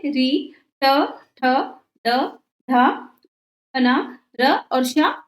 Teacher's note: मुर्धा से ऋ ट ठ ड ढ न र और श मुर्धन्य वर्ण कहलाते हैं